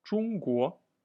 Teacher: So 中 国 is China. First tone, second tone.